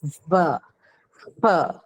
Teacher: So, F and V are labiodental sounds, right? So this V that you hear is a labiodental sound, whereas that V that you see in the first row, what is that?